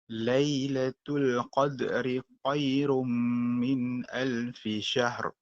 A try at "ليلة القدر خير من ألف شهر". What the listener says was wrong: Cuba tahqiqkan sedikit pada makhraj huruf kha. Lailatul qadri khairum. Kuatkan sikit. Khairum.